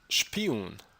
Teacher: the plosive p is preceded by the voiceless post-alveolar fricative sh